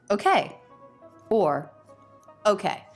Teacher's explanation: okay okay okay okay she's making that with first syllable stress that word can have either first or second syllable stress